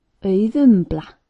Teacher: the accent should be on the first syllable, as always in Icelandic